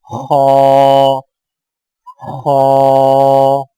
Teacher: خا کی ادائیگی میں زبان کی جڑ کو تالو کی طرف بلند کرتے ہوئے موٹی آواز میں پڑھیں